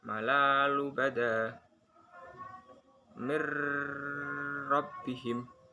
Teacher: Huruf non mati atau tanwin dilebur dengan huruf setelahnya dan tanpa didengungkan dan tanpa menahan bacaannya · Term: idgham bila gunah